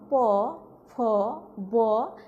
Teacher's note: প্রিয় শিক্ষার্থীরা, এখন দেখে নেওয়া যাক ওষ্ঠ ধ্বনি কি এবং এই ধ্বনিগুলি কোথা থেকে উচ্চারিত হয়। ওষ্ঠ ধ্বনি 2 ঠোঁটের সংস্পর্শে এই ধ্বনিটি উচ্চারিত হয়